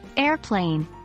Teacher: here we stress air and not plane